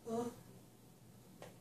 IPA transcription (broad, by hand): ʊ